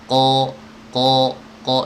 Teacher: Jadi terdengar seperti suara huruf o tapi sebenarnya bukan o. Dia sebenarnya a yang ditebalkan. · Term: qaf